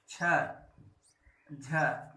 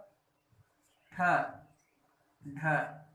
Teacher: महाप्राण ध्वनि में श्वास अधिक मात्रा में जो है बाहर निकलती है। तो हर वर्ग का, जो हमारे पांचों वर्ग हैं, का वर्ग, च वर्ग, ट वर्ग, प वर्ग और जितने भी वर्ग हैं, इन वर्गों से हर दूसरा और चौथा अक्षर जो है महाप्राण होता है।